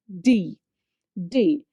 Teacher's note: Again, you can observe just back to the ridge. The our tongue tip is touching just the back of the teeth ridge. Then you can give that sound like D, D.